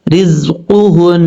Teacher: را زا زیر رز قاف پیش قو ہا نون پیش ہن نون زبر نا. رزقهن نون کے اوپر شد ہے غنہ کریں گے ایک الف کی مقدار